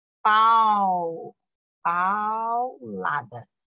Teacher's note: o A é o forte e o U é o fraco. Decrescente.